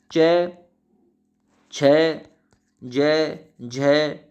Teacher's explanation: जो च वर्ग होता है उसे तालव्य कहते हैं, चम्मच लगी तालू में।